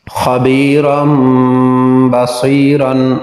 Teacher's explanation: نون تنوین کے بعد با آ گیا تو نون کو میم سے بدل کر اخفا کیا، یعنی غنہ کر کے پڑھا۔ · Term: اقلاب